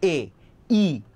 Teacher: কোনো কিছুর সাথে কি কিছু টাচ করতেছে না, বাধা পাইতেছে না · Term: ভাওয়েলস